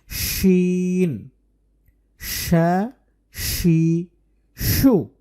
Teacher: শিন হরফের মাখরাজ হচ্ছে জিহ্বার মধ্যখান অনেকেই জিহ্বার আগার দিক থেকে উচ্চারণ করে করার চেষ্টা করে তখন